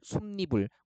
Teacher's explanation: 뒷말이 첫 소리에 니은이 첨가되는 겁니다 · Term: 니은 첨가